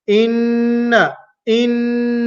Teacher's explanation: is a lengthening nasal sound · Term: guna